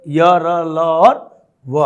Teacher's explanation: इनका उच्चारण मुख के विभिन्न भागों में जिह्वा के सटने से नहीं होता, बल्कि निकट जाने से होता है, निकट पहुंचने से होता है, और इनकी उत्पत्ति नाभि से प्राय होती है, अतः इसे अंतस्थ व्यंजन कहा जाता है।